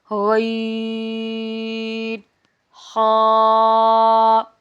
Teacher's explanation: غین اور خا، حلق کے اوپر والے حصے سے ادا ہوتے ہیں